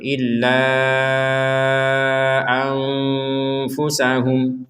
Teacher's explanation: nun sukun bertemu dengan fa. Kita membacanya dengan samar. Jangan dibaca jelas.